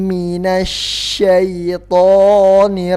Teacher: Kalau makhraj shin itu di lidah bagian tengah ke langit-langit atas bagian tengah. Kalau sin di ujung lidah.